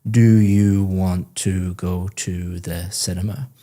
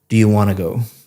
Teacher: Want to go sounds like one word, want to go, because you're connecting all the speech Yeah. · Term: connected speech